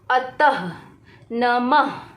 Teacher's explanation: इसे बोलने पर ह की ध्वनि निकलती है, यानी कि जिस शब्द के अंत में ये दोनों विसर्ग लगे होते हैं वहाँ पर क्या होता है, ह की ध्वनि निकलती है।